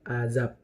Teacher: azab itu huruf terakhirnya itu B, tetapi terdengar seperti huruf P.